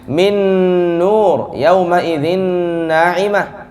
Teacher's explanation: harus dari hidung, harus ada gunnahnya. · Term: idgham bi gunnah